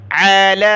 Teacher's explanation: لام کے اوپر کھڑا زبر اور مد ہے تو اس کو زیادہ کھینچنا ہے